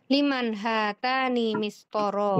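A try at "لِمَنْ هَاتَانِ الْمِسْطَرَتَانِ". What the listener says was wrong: Enggak, kurang teliti Ibu bacanya. Liman hatani al-mistorotani, kan ada alnya.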